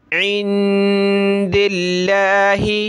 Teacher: اور لفظ اللہ کے بارے میں آپ کو بتایا کہ اس سے پہلے زیر ہو تو پتلا کریں گے، اس سے پہلے یہ دال پہ زیر ہے تو ہم لفظ اللہ کو پتلا کریں گے